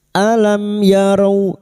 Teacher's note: Mim sukun bertemu ya idhar syafawi. Mim sukun dibaca jelas tanpa mendengung. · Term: idhar safawi